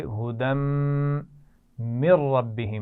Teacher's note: दाल पर तनवीन है और उसको आगे मीम से मिलाएंगे गुन्ना करते हुए